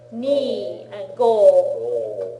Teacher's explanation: on all the single syllable numbers, they draw out the vowel sound a little bit